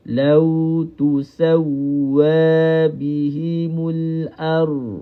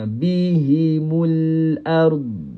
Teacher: Huruf ra hujung lidah. Huruf ra hujung lidah. Huruf dad ini tepi lidah.